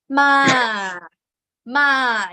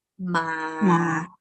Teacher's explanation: It has to start from low, end at low